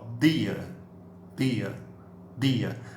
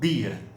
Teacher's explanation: Você põe a língua no teto da boca e você faz uma explosão